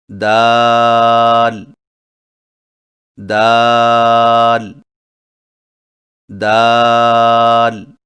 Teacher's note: دال کی ادائیگی میں زبان کی نوک کو سامنے والے اوپر کے دو دانتوں کی جڑ سے لگا کر باریک آواز میں پڑھیں